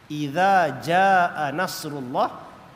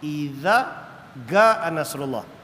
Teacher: Setengah tempat macam Mesir dia terkenal dengan huruf jim, sebutan dia ga.